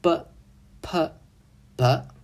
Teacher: b▁是不送气清音，▁p▁是个送气清音，而▁b▁是个浊音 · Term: 三分对立